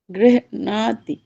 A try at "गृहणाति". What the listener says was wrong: बीच में गैप नहीं, गृहणाति नहीं, गृहणाति नहीं, गैप नहीं, गृहणाति। हाँ यहाँ से हृदय से उठेगा, फिर अणा पकड़ेगा, फिर अणाति, गृहणाति।